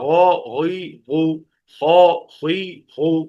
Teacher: غین خا یہ حلق کے اوپر والے حصے سے جہاں کوا لٹک رہا ہوتا ہے، جہاں ٹارچ مار کر ڈاکٹر چیک کرتا ہے کہ گلا پکا ہوا تو نہیں، وہاں سے غین اور خا.